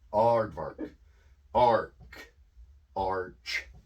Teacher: more of an ah sound less of an a sound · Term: universal a